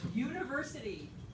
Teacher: A voiced palatal glide.